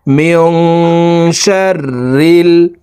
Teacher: ইকফাহ গুন্না নুন সাকিনের পরে ইকফার হরফ শিন আসছে এই কারণে এই নুন সাকিনকে নাকের ভিতরে লুকাইয়া গুন্নার সহিত পড়তে হবে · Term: ইকফা গুন্না